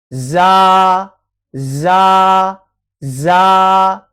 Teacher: زا کے اندر سیٹی کی آواز آئے گی،